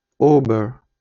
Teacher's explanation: буква О також у німецькій мові вимовляється як українська о але вона звучить від німців більше як у тобто щось середнє між о і у